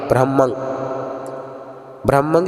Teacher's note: ਹਹ ਵੀ ਨਹੀਂ ਕੱਟਨਾ ਤੇ ਰਰਾ ਵੀ ਨਹੀਂ ਕੱਟਨਾ ਦੋਵਾਂ ਦੀ ਆਵਾਜ਼ ਆਵੇ